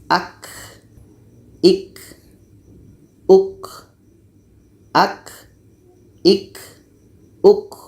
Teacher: K ini letaknya pada pangkal lidah menempel dengan langit-langit atas. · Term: hamas